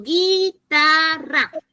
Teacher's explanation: En la oralidad, yo digo guitarra. Gui, suena la I, pero no suena la U.